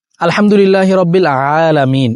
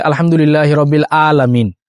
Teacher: এখানে আইন আলামিন হলকের মধ্যখান থেকে উচ্চারণ হবে